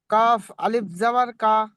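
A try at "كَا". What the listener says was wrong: না, না, কাফ আলিফ জাবার কা বলছেন কেন? কাফ আলিফ জাবার কা, এটা যে মদ, আলিফ মদ্দা, আলিফ মাদ্দা, দেখে পড়েন।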